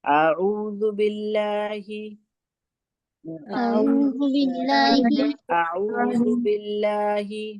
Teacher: با کے نیچے زیر ہے، اس لیے زیر کی حرکت ہے، اس لیے ہم اس کو باریک پڑھیں گے